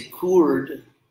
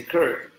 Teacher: we don't say coord. Coord, we say curd, so the vowel's the R. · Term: the vowel R